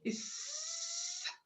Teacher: which is voiceless the vocal cords don't vibrate